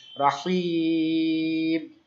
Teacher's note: আর রহিমি, রহিমি, হিটা এক আলিফ ছিল, এখন এই হিটাকে আমরা লম্বা টান দিব আর মিমে সাকিন করব। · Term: মাদ আরজি